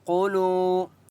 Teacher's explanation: قاف مستعلیہ میں سے اس لیے قاف کو موٹا پڑھیں گے